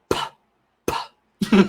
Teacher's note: So, you could start with a BBB and sort of go into singing BB. But with a P, your voice box doesn't work at all. You're just blowing air. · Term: P sound